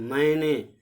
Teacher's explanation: तो यहाँ पर मैंने लिखते समय जब आप इसका उच्चारण कर रहे हैं मैंने, तो ध्वनि जो है नाक और मुंह दोनों से निकल रही है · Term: अनुस्वार